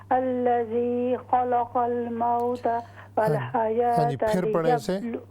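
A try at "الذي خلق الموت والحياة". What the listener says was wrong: ہاں جی نہیں، یہاں پر یہ جو لام ہے نا، دونوں لام یہ ہم نے ان کو موٹا نہیں پڑھنا.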